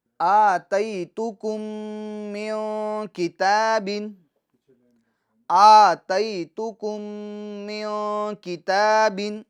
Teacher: الف میں کھڑی حرکات ہیں لہٰذا ہم اس کو ایک الف کی مقدار کھینچیں گے۔